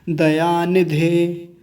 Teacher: निधे में छोटी ई की मात्रा है, ह्रस्व इकार है, तो जल्दी बोला जाता है। नहीं तो यहाँ भी लोग लंबा खींच देते हैं थोड़ा सा।